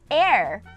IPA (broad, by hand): ɛr